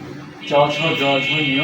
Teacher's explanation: এগুলো হচ্ছে তালব্য ধ্বনি